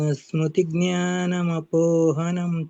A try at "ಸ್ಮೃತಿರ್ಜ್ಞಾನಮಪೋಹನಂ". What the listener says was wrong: ಸ್ಮೃತಿರ್ ಅಲ್ಲಂತೂ ಕ್ಲಿಯರ್ ಆಗಿ ಕೇಳಿಸ್ಬೇಕು ಪ್ರಭುಜಿ. ಸ್ಮೃತಿರ್ ಜ್ಞಾನಂ ಅಪೋಹನಂ ಚ.